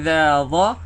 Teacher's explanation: Jadi sa, za, dha, keluarkan hujung lidah. Jadi zal kan, hujung lidah keluarkan sikit.